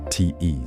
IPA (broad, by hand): ts